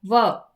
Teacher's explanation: दंतोष्ठयः वर्णः, दांत और होंठ